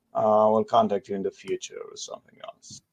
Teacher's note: You could potentially go a little higher pitch on few